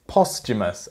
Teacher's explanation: It's 'posthumous' and the 'h' is silent.